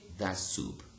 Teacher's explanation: t was a plosive and s was what? A fricative. Now both of them have become what? Fricatives.